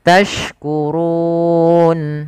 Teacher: Maka kita namakan dengan mad arid disukun karena dia disebabkan ada sukun arid dan sebelumnya huruf mad. Panjang untuk mad arid disukun sendiri boleh 2 harokat, boleh 4 harokat, dan boleh pula 6 harokat.